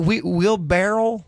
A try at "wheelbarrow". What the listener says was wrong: Wheelbarrow. It's not a barrel. you're doing it wrong.